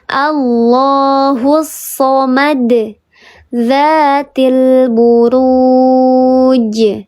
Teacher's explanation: Pantulannya terdengar lebih besar daripada qalqalah yang sughra. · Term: qalqalah yang kubra